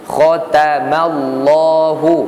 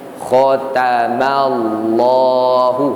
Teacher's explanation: Kha tebal, ta nipih, mim nipih, Allah tebal balik.